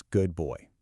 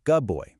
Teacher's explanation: that duh sound often changes to sound more like the buh sound and ends up sounding like good boy.